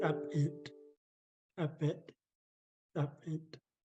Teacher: This one, we don't hardly use the pinched P, but you snap out the P, making a popping sound